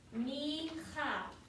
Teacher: If we don't say this big throaty H sound, we haven't really pronounced the word correctly. · we don't say it like a ch, like we do in English, okay? It's going to be this super huge, throaty sound.